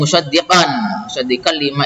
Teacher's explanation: Kemudian ini musaddiqan lima tadi ya, tulisannya musaddiqan lima idgham bila gunnah, tanwin fathahnya dimasukkan tanpa dengung